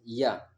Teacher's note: जो य है ये तालाव्य है मतलब तालु से बोला जाता है